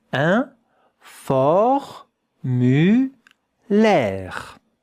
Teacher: The E at the end, you don't hear it.